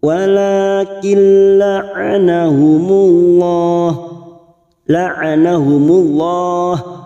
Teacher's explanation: nun sukun atau tanwin yang bertemu dengan 2 huruf yaitu huruf lam dan huruf ra, namanya bacaan idgham bila guna, hanya masuk tanpa mendengung